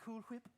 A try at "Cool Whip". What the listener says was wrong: But why are you saying it like that? Oh, you're saying Cool Whip. You're putting a lot of emphasis on the H. Say cool. Say whip.